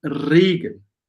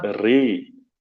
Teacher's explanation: So it's really important you take a close E